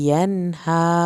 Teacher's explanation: यहाँ पर गुन्ना नहीं होगा क्योंकि आगे हा से लफ्ज़ शुरू हो रहा है